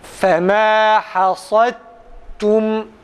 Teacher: fema hasadtum'da dalı ta'ya çeviriyoruz ve ta'yı diğer ta'da idgam ediyoruz. Ta'yı diğer ta'ya katıyoruz ve öyle okuyoruz.